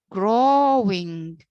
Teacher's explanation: The first part is stressed, while the second part, the ing, is unstressed.